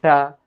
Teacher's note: ट वर्ग का उच्चारण स्थान देखा जाए तो मुर्धा से होता है बोलिए ट जैसे ही आपके जीभ ऊपर जाकर फट से कहां